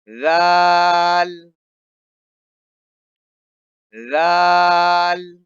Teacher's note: جس طرح سے سا کے اندر زبان باہر آتی ہے اسی طرح سے اس حرف کے اندر بھی زبان باہر آتی ہے